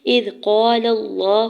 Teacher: الف سے پہلے قاف کے اوپر زبر الف مدہ اور لام کے زبر کو لام جلالہ کے ساتھ ملاتے ہوئے لام جلالہ کے اوپر کھڑی زبر دو حرکت کھینچ کے ادا کریں گے